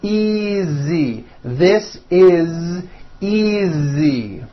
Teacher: the S is like a voiced Z